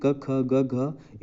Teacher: का वर्ग में क, ख, ग, घ, इनका उच्चारण कंठ से होता है